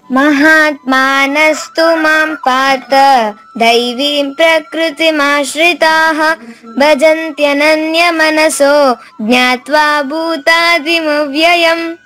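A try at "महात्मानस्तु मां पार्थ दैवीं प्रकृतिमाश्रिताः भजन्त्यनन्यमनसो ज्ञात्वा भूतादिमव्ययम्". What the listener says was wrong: Very clear, thank యూ.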